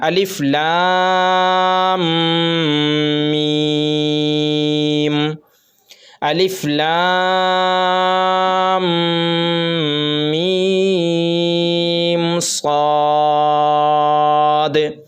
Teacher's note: میم کے اوپر تشدید ہے تو اب میم پر ہم کو غنہ کرنا ہے۔